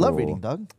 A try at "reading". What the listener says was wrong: Not that about you said reading without the R.